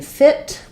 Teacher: in fit we just have the I vowel it's going to be LAX and also a little shorter because of the T sound in feet also a little shorter but slightly longer than fit